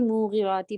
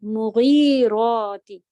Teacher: میم کے ساتھ صرف پیش ہے حرکت، ایک کاؤنٹ ہوگا